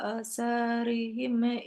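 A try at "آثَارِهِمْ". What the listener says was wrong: Panjang. Asarihim.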